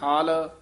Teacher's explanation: ਹਲ ਭੋਲਾ ਹੀ ਉਚਾਰਨ ਕਰਨਾ ਹਲ ਨਹੀਂ ਕਹਿਣਾ ਹਾਲ